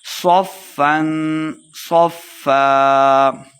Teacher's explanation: صفا اخفا یعنی غنہ کر کے پڑھیں گے فا مشدد ہے صاد کو موٹا پڑھتے ہوئے فا کے سامنے لائیں گے